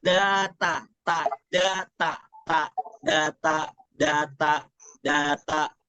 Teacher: harus bedakan ya ujung lidah dengan pangkal gigi seri atas